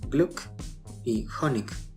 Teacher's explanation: Al final de la palabra puede sonar como una K, aunque esto varía dependiendo de los hablantes.